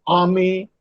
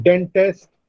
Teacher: the first syllable is stressed, the second syllable is not stressed.